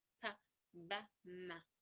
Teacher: As I said before, that bilabials, two lips come together